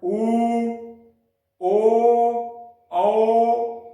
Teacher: ओष्ठ की आकृति कैसी हो जाए, गोल हो जाए, तो उन्हें वृत्ताकार स्वर वर्ण कहते हैं।